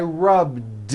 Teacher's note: all I did was add a voiced D sound at the end